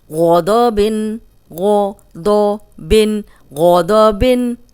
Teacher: غین بھی موٹا ہے، دود بھی موٹا ہے، دونوں موٹے حرف ہیں، اور صرف با جو ہے وہ باریک ہے۔